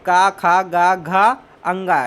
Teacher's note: ये जो है कंठ से बोले जाते हैं। कंठ मतलब गला। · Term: का वर्ग